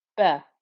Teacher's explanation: We know that the alif here, when it has the circle like that, we can just ignore it. Ra with a fatha, nice thick and heavy ra, joining to the ba with the shadda. Give enough time for there to be 2 bas there. · Ra with a fatha, nice thick and heavy ra, joining to the ba with the shadda. Give enough time for there to be 2 bas there. Rabba, the first ba within that shadda, you're not going to be able to hear at all, but there will be enough time as if you could.